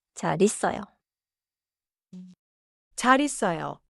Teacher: 잘 ends with the 받침 리을. 있어요 starts with 이. So 잘 있어요 flows as 자 리써요. · 잘 있어요 is written with a space, but in natural speech the 리을 sound moves forward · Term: phrase-level linking